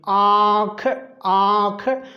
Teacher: नाक से भी हवा निकाल रही है और मुंह से भी निकाल रही है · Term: अनुनासिक स्वर